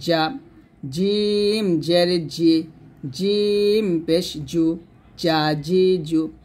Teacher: উচ্চারণ করার সময় কিন্তু জিহ্বাটা কোনভাবে নিচে দাঁতে লাগানো যাবে না জিহ্বার মধ্যখান তার বরাবর উপরের তালুর সঙ্গে লাগাতে হবে